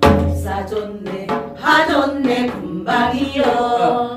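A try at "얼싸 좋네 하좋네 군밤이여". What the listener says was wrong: 그러니까 너무 딱딱하게 얼싸 좋네 하좋네 분밤이여 이러면 너무 딱딱한 느낌 들어요. 얼싸 좋네 하좋네 분밤이여 분밤이여 이렇게 시작. 얼싸 좋네 하좋네 분밤이여 에라 생률 밤이로구나.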